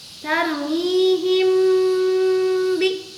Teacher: Mim mati menghadapi huruf ba, atau tadi kita sudah bahas, ini adalah contoh dari ikhfa syafawi, di mana cara membacanya bukan jelas tapi harus dengan dengung.